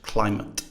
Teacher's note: stress on one, schwa on the second